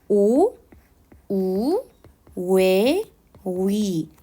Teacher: 여러분들 지금 발음해 보면 입술이 둥글게 모아집니다 원순 모음 화라는 것은 그러면 원래는 입술이 동글게 오 우 외